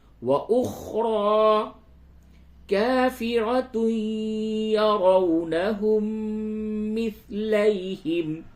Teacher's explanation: را کو پر کیجئے اور تھوڑا سا کھینچئے، کھڑا زبر ہے